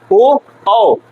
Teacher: ओ और औ का कंठ और ओष्ठ दोनों का इस्तेमाल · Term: कंठोस्टम